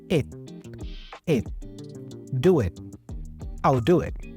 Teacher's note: he pronounces the T in it as a stop T